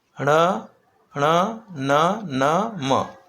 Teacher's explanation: तो इन सभी का देखो उच्चारण, ण ण न न म, यह अनुनासिक वर्ण है, यानी अनुनासिक यानी जिनका उच्चारण नाकों के माध्यम से होता है, नासिका के माध्यम से होता है